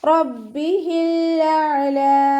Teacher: റ ഫതഹ ആയതുകൊണ്ട് നമ്മൾ ഉയർത്തി ഉച്ചരിക്കും.